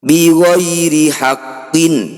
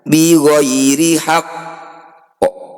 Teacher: bunyi qaf tetap dipantulkan, sebelum memantul ada jeda. Jadi pantulannya tidak langsung. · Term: qalqalah akbar